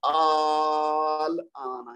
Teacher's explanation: لام کو ہم نے ہلکا سا پڑھا ہے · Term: مخفف